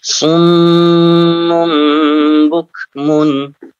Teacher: sum ditahan 2 harokat, mum tahan 2 harokat, bukmun jelas ya, umyun ditahan 2 harokat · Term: gunnah